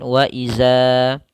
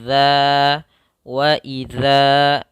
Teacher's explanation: Ya, huruf zal itu salah satu sifatnya izlaq, yaitu mudah dalam pelafalannya. Kemudian makhrajnya keluar daripada ujung lidah menempel dengan gigi seri atas